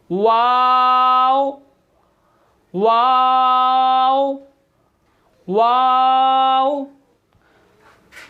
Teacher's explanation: वाव जो है वो दोनों होंठों की गोलाई से अदा होता है, यानी दोनों होंठों को गोल करके अदा होता है।